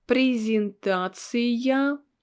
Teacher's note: we have this я in the end after a vowel, and it should be pronounced with a sound y.